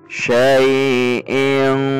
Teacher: Dan saat mengucapkan tanwin posisi kita sudah betul-betul pada posisi makhraj huruf qaf, sehingga terdengar saat dengung ini seperti bunyi ing, karena huruf qaf berada pada pangkal lidah. Karena huruf qaf juga merupakan huruf isti'la, maka bunyi dengung dan samar ini juga memiliki kecenderungan yang tebal. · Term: ikhfa, ikhfa adna